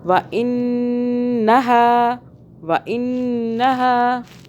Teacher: نون مشدد آ رہا ہے، اس پہ کیا کریں گے؟ غنہ کریں گے 2 سیکنڈ کے لیے۔